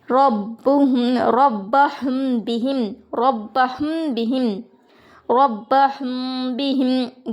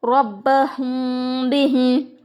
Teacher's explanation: ربہم بہم، ربہم بہم، ربہم بہم، گنہ بھی ہوگا اخفا بھی ہوگا۔ ربہم بہم، میم کی آواز کو چھپائیں گے بھی اور گنہ بھی کریں گے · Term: اخفا شفوی